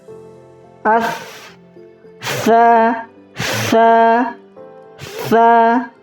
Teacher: Tha itu ada suara yang mengalir apabila disukunkan. As, tha, atau huruf ha itu suaranya rata-rata mengalir. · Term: rakhawah